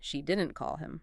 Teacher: Stress on didn't. She didn't call him. Meaning the call simply did not happen.